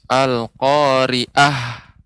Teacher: Ainnya Ibu lebih ditampakkan ya, jangan sampai terdengar jadi huruf alif.